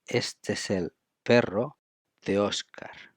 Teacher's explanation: We link este es and el, you see, vowel, vowel, consonant, vowel.